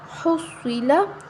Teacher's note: ہا صاد پیش حس، صاد زیر سی حسی، لام زبر لا حصیلا۔ صاد کو ہم موٹا پڑھیں گے کیونکہ صاد حروف مستعلیہ میں سے ہے، موٹا حروف ہے، تو ہم اس کو موٹا پڑھیں گے اور کسی بھی حرکت کو ہم لمبا نہیں کریں گے، ٹھیک ہے۔